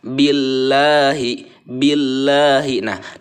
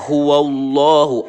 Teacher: lafadz Allah nya itu dibaca tipis · Allahnya di tebal ya karena sebelumnya berharokat fathah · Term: tarqiq